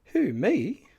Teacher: the broken or sharp rise fall rise tone 2 variation commonly heard with the expression